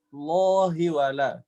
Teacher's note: Allah, lo-nya kurang tebal sedikit, Ustazah. Dia 2 harokat ya.